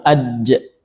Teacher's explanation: Dan begituun huruf jim ja. Apalagi kalau kita sukunkan aj ya suaranya tertahan dulu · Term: syiddah